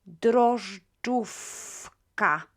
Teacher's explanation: before the unvoiced k, we will pronounce the v as f